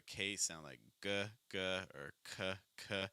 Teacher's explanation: that's the back of your tongue going high